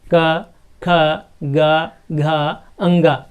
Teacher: गले के जो ऊपरी हिस्सा है उस ऊपरी हिस्से में टच कर रही हमारी जिह्वा · हमारा जो जिह्वा है वो गले के पास टच हो रही है